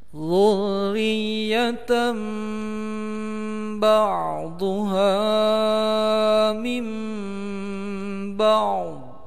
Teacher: Ini iqlab, ini juga iqlab. Tanwin bertemu dengan ba, maka bacaannya menjadi huruf mim, mendengung panjangnya dua harokat.